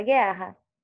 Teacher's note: Então, dígrafo, eu já disse que tem o dígrafo GU, que nesse caso você fala GE, você não fala o som do U. E você também tem o dígrafo RR.